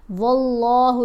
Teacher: لام کو پر پڑھا گیا، موٹا پڑھا گیا